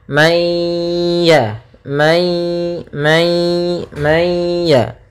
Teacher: nunnya dimasukkan kepada huruf ya ya Sehingga langsung kepada huruf ya dan ditahan suara ghunahnya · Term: Idgham naqis, idgham bi gunnah